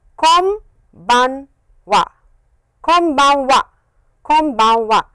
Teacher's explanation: the way it is pronounced is press your lips close your lips and it is m sound